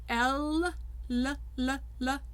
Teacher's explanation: L, even when it's using the tip of the tongue, air is going over the sides of the tongue because the tongue is up in the front.